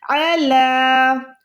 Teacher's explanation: پر بھی دیکھیں عین جو ہے حلق کے درمیان سے ہی، لام پہ کھڑی زبر ہے، لام کو آپ نے کھینچنا ہے